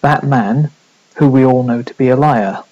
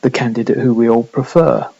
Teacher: so there is this slight pause between the man and the relative clause